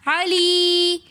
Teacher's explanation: یا مدہ ہے یا ساکن اس سے پہلے زیر ہونے کی وجہ سے ہم اس یا کو ایک الف کی مقدار کھینچ کر پڑھیں گے۔